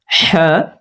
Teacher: নরম আওয়াজে পড়তে হবে শ্বাস চালু থাকবে হা গলার মাঝখানটা হালকা চিপে হাওয়া বের করবো হা গরম হাওয়া